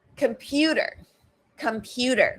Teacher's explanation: Again, primary stress on that second vowel, the second syllable. So right? That's schwa, the first syllable.